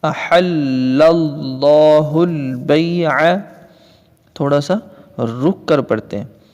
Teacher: لفظ اللہ کی لام سے پہلے زبر ہے، لفظ اللہ کی لام کو پر کر کے پڑھیں گے